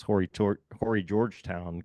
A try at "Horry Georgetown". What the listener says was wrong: And I learned that it's Ori Georgetown. You don't pronounce the H.